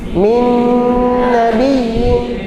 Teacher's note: Jadi ketika gunnahnya masuk ke hidung, idgham bi gunnah masuk gunnah ke hidung, khayshum